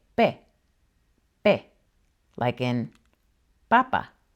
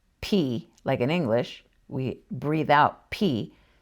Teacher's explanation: La letra P is similar to the English P, except less breathy.